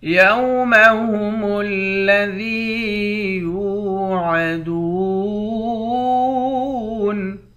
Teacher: ذال کو یا کے ساتھ ملا کر یا کو ایک الف کے مقدار کھینچیں گے، یا حروف مدہ ہے۔